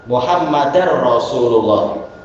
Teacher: nunnya hilang langsung karena berjumpa dengan ro mengalami idgham bila ghunah